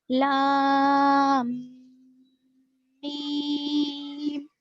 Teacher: ٹھیک ہے، لام کو اگر ہم لکھیں گے تلفظ میں لام الف میم پھر میم یا میم، تو لام کے آخر کا میم اور میم کے فرسٹ والا میم یہ 2 ایک جگہ جمع ہو گئے، اسی وجہ سے یہاں پر ہم غنہ کر کر پڑھیں گے. ٹھیک ہے، لام میم اس طرح سے.